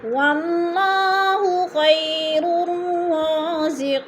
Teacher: رازقی قی پہ بھی یا مدہ ہو رہا ہے یا ساکن سے پہلے قوف کے نیچے زیر ہے تو یا مدہ کو ایک الف 2 حرکات کے برابر لمبا کر کے پڑھنا ہے